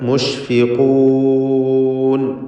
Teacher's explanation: ഇതിൽ ഖാഫിന് നിസ്ബിയ തഫ്ഖീം കൊടുത്ത് തടിപ്പിച്ചുച്ചരിക്കുക